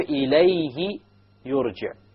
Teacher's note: you have the ha preceded by a sukoon, so there will be no mad whatsoever. So if there is a silent letter before or after, or both before and after, the pronoun, the ha, over here the ha, over here the ha, over here the ha, then there will be no mad whatsoever.